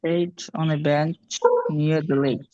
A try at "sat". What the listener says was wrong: Sat না set.